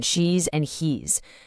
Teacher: don't forget that buzzing Z sound in she's and he's